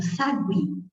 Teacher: Então, eu tenho o U e o I de novo na mesma sílaba. Mas dá para você perceber que o I foi pronunciado mais fortemente. Então, o I aqui é a vogal aqui e o U é a semivogal, nos dando um ditongo crescente, ok?